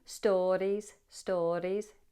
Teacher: Tapping the R every time we see it.